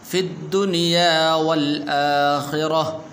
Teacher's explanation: تا یہ حالت وقف کے اندر ہا بن جاتی ہے